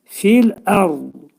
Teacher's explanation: Dil iki dişin arasına girərək dad hərfini deyirik.